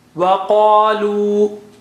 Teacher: Waqalu, qa is high sounding